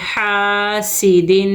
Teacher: دو زیر کی تنوین کو دو حرکت غنّے کے ساتھ پڑھیں گے